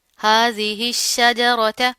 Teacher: ہا کے اوپر کھڑا زبر آ رہا ہے، ایک الف کے برابر اس کو پڑھا جائے گا